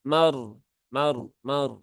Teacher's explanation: rnya Sukun yang dia didahului harakat fathah berarti rnya berhubungan dengan fathah maka rnya dibaca dengan tebal